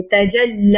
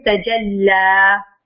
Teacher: موٹا نہیں کرتے, لام کو باریکی پڑھیں گے. تجلی, لام کو نہیں موٹا کرنا.